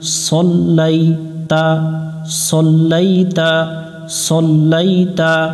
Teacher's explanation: সদ অক্ষর মোটা করে পড়তে হয় আমরা শাপলা ফুল দেখে মোটা করে নিব জবরে আকার পড়বো না